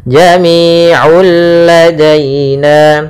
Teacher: Bila gunnah artinya tidak disertai dengan gunnah sehingga langsung masuk ke lam dan tidak ditahan. Jami'ul ladaina, ya, tapi sempurnakan dulu lamnya. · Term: idgham bila gunnah